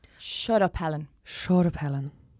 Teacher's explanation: Dublin has a lot more like breath behind it than your accent in terms of like a continuous flow of breath